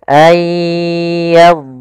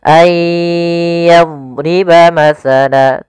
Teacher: Ya, dia huruf dhad ada satu sifat yang dia khusus untuk huruf dhad, yaitu sifat istitalah, memanjang dhadnya ketika dia sukun. Ayyadriba masala, dan tidak boleh memantul.